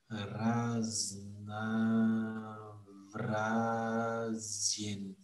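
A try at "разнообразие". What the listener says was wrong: C'est le B comme Boris. Raznavrazin.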